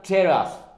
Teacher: 子音プラス母音でテーラスに変化するんだ。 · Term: フュージョン